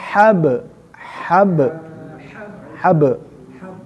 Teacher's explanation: ba itu hurufnya qalqalah Artinya harus di mantulkan ya